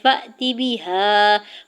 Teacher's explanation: فا کے زبر کو حمزہ ساکن کے ساتھ ملاتے ہوئے جھٹکا دیں گے